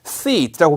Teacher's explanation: SEAT 이거를 sit라고 길게 읽어야 되는데 짧게 sit 해버리면은 앉다라는 SIT처럼 발음이 되거든요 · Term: 장음